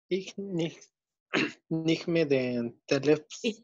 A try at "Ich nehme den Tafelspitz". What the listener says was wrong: La H no se pronuncia. Ich nehme den Tafelspitz.